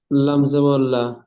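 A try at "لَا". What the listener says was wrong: লামটা টান দেন, 3 আলিফ পরিমাণ টান এই অক্ষরে, লাম জাবার লা।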